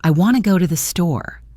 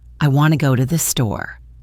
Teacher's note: The main stress is on want and store, while the other little words become much softer and blend together.